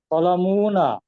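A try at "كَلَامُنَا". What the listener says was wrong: কলামুনা না, কলামুনা। মুতে মুতে কোনো মাদ হবে না।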